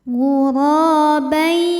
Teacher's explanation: Ra hukumnya matobi'i zahiri, sebab ada alif yang sebelumnya didahului baris fathah, maka huruf ra panjang 2 harokat. Ghurabai.